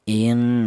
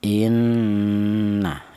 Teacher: Ghunah itu artinya ada suara berdengung. Adapun untuk panjangnya dengung yaitu dua harakat atau dua ketukan